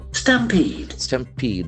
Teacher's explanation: Stampede, the accent falls into second syllable.